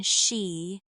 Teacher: The SH sound, like in she, pushes the tongue slightly further back and lets the air out in a softer way.